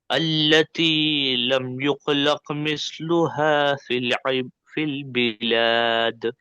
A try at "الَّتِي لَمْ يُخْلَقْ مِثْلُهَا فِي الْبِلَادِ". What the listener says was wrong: یہ دونوں کا خا اور قاف کا مخرج ایک ہی ادا کر رہے ہیں آپ. خا پڑجیب کے باہر سے ادا ہوتا، قاف پڑجیب کے اندر سے. التی لم یخلق، یخلق، یخلق، یخلق. التي لم يخلق مثلها في البلاد.